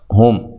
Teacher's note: میم ساکن کا یہاں اظہار ہے، غنہ نہیں کریں گے